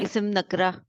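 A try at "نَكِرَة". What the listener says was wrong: नकरा नहीं कहना, न की। काफ पे साकिन नहीं है, जेर है। नून अलहदा है, काफ अलहदा है। न की रह, न की रह।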